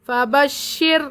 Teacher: رائے ساکنہ سے پہلے زیر ہے اسی لیے رائے ساکنہ باریک ہوگی